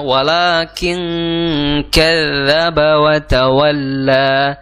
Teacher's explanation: tawalla kadzaba ya di situ ada tasdid pada huruf dalal ya makhraj huruf dalal di ujung lidah bertemu dengan gigi seri atas ya di ujung lidah bertemu gigi seri atas sedikit keluar ujung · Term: huruf dzal